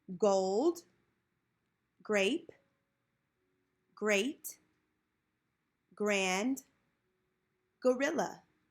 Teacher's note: grape great grand gorilla the letter g is pronounced the gu the g sound is partially blocked by the back of the tongue · it is a clipped voice sound because your tongue is kind of stopping it